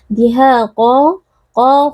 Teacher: qo Huruf tebal kita angkat pangkal lidah supaya sifat timnya ini bisa keluar kemudian qo juga memiliki Mad iwad karena kita waakaf pada fathatain · Dihaqa, ha mad tabi'i karena ada alif yang sebelumnya berharokat fathah dibaca panjang 2 harakat. Dihaqa, qa huruf tebal kita angkat pangkal lidah supaya sifat takhimnya ini bisa keluar